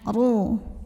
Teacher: Maka ra-nya dibunyikan dengan menebalkannya, pangkal lidah kita naik. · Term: tafkhim